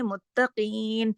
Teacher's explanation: اس میں قاف موٹا پڑھا جائے گا ، موٹے حروف کو موٹا پڑھا جائے گا، باریک کو باریک،